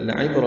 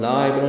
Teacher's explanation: پڑھیں گے، 2 حرکات لمبا کریں گے، لام کافی باریک ہے، لام کو لمبا نہیں کرنا، لعبرہ میں لا عبرہ نہیں پڑھنا ، لعبرہ عین وسط حلق سے ادا کرنا ہے، با ساکن